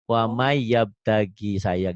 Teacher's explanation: Jadi N-nya kemana? N-nya seperti hilang, jadi wamai itu. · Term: idgham